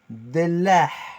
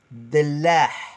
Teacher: Avec le H expiré aigu dans la gorge. Dellah. Et vous pouvez entendre dans certaines régions Dellah.